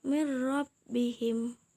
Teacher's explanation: Min rabbihim dibaca dengan mirrobbihim tetapi tidak mendengung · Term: hukum bilagunnah, bila gunnah